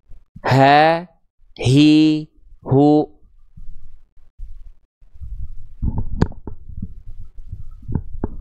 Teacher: Makhraj H besar itu bukan dilafalkan dari dada, teman-teman sekalian. Tapi H besar itu dilafalkan dari yang namanya aqsal halqi. Aqsal halqi itu artinya adalah tenggorokan paling bawah atau tenggorokan pangkal atau tenggorokan paling dalam.